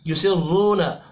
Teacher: रॉ को पेश की वजह से पुर पढ़ेंगे